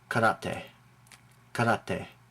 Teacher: you don't stress the second to last syllable, rate. It's karate, not karate or karate.